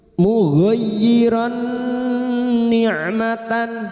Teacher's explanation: mugyiran nikmatan huruf ro yang berharakat fathatain bertemu nun idgam bigunah memasukkan dengan mendengung masuk pada huruf nun dan mendengung selama tiga harakat